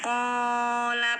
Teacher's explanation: panjangkan dua harokat ini matabi'i fathah diikuti alif